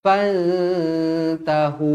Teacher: Nun kosong bertemu dengan ta ikhfa Hakiki dengung dua harakat